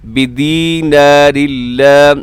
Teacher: यहाँ नून की आवाज़ बिल्कुल साइलेंट ख़त्म हो जाएगी